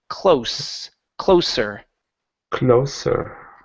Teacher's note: instead of pronouncing a z sound this is an unvoiced S